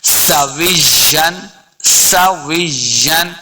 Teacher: سین پہ سیٹی کی آواز آئے گی